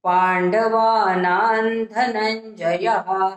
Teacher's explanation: धनंजयाच्या पूर्वी जो नावर अनुस्वार आलेला आहे त्याचा उच्चार आपल्याला न सारखा करायचा आहे